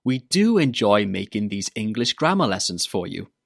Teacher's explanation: Remember to put the stress on do when you're saying it.